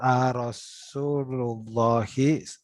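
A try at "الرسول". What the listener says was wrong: Nggak ada Allahnya. Nggak ada Allahnya.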